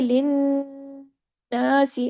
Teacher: नून पे तशदीद है, बड़ा गुन्ना होगा।